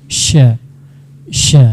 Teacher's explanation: jelas dia sya di pertengahan lidah ya nak ya. Makharijul hurufnya harus bisa dibedakan sa, sya, so, sya. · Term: makhraj shin